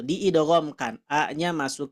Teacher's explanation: diidghamkan a-nya masuk ke huruf Shad lamnya diabaikan